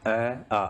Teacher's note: अगर आप बोल के देखें तो हमारे कंठ से इनका उच्चारण स्थान होता है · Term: कंठ्य